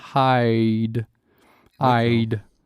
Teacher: donc le I est une diphtongue, c'est bien hide.